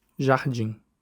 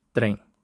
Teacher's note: In both languages, the nasal consonants M and N in a syllable coda are no longer pronounced. Instead, they nasalize the preceding vowel. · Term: nasal vowels